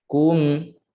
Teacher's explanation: Dan mim ni naik suara ke hidung secara semula jadi. Satu harakat.